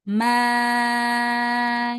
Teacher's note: Huruf mimnya dibaca panjang enam harakat kemudian huruf dalnya ditahan. Maadda. Nah, di sini huruf mimnya panjang enam harakat bisa dipatok pakai ini ya.